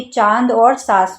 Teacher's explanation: ऐसे वर्ण जिनके उच्चारण में नाक और मुख दोनों मदद करते हैं। ऐसी ध्वनियां जिनमें नाक और मुख दोनों का यूज़ होता है उनको अनुनासिक कहा जाता है।